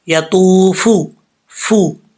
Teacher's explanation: واو ساکن سے پہلے پیش ہے تو واو مدہ ہوتا ہے. ایک الف کی مقدار اس کو لمبا کریں گے.